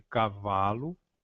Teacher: a sílaba tônica de cavalo é o vá